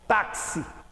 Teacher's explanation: Simples, porque este X de táxi tem duplo valor sonoro. Eu pronuncio o X como se fosse KS, táxi. Por isso, olha, 4 letras, 5 fonemas.